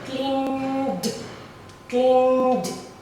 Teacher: So clean is voiced, and also the ED sound, which is the D. Okay, it's also voiced.